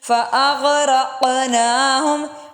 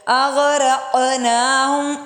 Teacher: قاف پہ موٹا حروف بھی اور قلقلہ بھی ہو رہا ہے